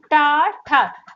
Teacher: जैसे टा ठा, अब आपकी जीवा ऊपर की ओर जा रही है तो गाइस आप समझ जाइए मूर्धा से होता है।